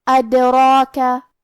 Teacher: مد الف اپنے پیچھے والے حرف کا حکم لیتا ہے تفخیم میں اور ترقیق میں، لہذا ہمیں راء کو اور مد الف کو بھی بھاری آواز میں پڑھنا ہے. · حرف الراء کی حرکت ہے زبر، تو یہاں راء کا حکم ہے تفخیم. ہمیں راء کو موٹی آواز میں پڑھنا ہے، اور کیونکہ اس پہ کھڑا زبر ہے تو یہاں مد الف ہے.